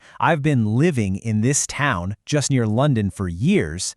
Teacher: I am really only stressing the words living, town, London, and years.